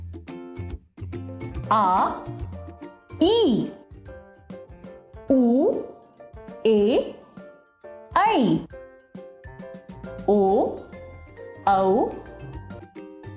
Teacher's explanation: इनका उच्चारण करते समय ह्रस्व स्वरों की अपेक्षा दुगुना समय लगता है इनकी संख्या सात है आ ई उऊ ए ई ओ औ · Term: दीर्घ स्वर